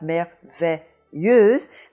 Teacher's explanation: the S between two vowels sounding like a z · the eu in front of a z sounding like euh